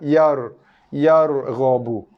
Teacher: Ingat huruf ra makhrajnya di lidah. So kita tebalkan bunyi ra tu di lidah, bukan di bibir. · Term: tebalnya di lidah